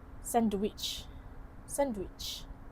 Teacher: The cluster is simplified which often happens in casual or rapid speech.